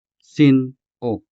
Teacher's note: Note the sharp pause between the two syllables, sin, and the standalone syllable, o